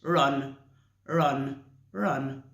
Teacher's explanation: Your tongue is in the middle. It's curved in the middle. It's not touching the top of the roof of your mouth. It's just in the middle. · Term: normal R